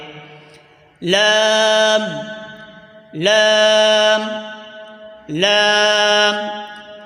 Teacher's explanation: जबान का किनारा और आगे की दो दाढ समेत दांतों की जड़ से अदा होता है